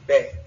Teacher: the R's in French that are in coda positions do not exist in Creole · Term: R in coda positions